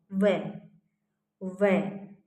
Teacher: व एक नीचे वाले होठ का और ऊपर वाले दांतों का आपका यूज होता है इसके अंदर